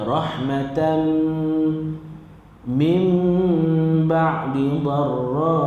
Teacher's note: Nama hukum dia idgham ma'al ghunnah, masuk beserta dengan dengung. Rahmatan dia tak bunyi dah tan tadi, dia terus masuk dengan dengung huruf mim.